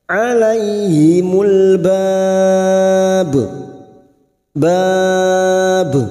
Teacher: kita panjangkan dulu 4 harokat mad arid li sukun, lalu ujungnya kita pantulkan karena huruf ba huruf qalqalah